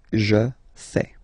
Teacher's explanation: Remember, final S not pronounced.